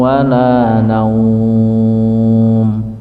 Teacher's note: Nun wau sukun fathah naum, jadi bukan nau tapi naum.